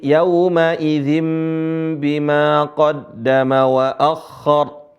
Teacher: di sana kalau pakai mushaf Utsmani ada mim kecil menunjukkan apa Nun diganti menjadi mim